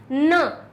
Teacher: दंत से निकल के नासिका इसके साथ में जुड़ जाता है